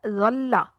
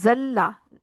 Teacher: जाल की आवाज सीटी की आवाज के साथ नहीं आएगी।